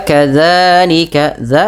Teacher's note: ujung lidahnya nempel dan dia dipanjangkan dua harakat karena mad thabi'i